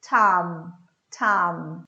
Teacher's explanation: O M é lábios cerrados, como o nosso M de início de palavra, mãe.